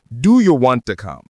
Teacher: The T in want disappears to do you want to come?